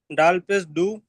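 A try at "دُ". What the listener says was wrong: দাল পেশ দু নয়, দালের উপরে পেশ এসছে আর তারপরে ওর উপরে সাকিন এসেছে, তাহলে দাল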